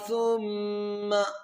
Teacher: یہاں پر میم مشدد ہے، یہاں پر غنہ کریں گے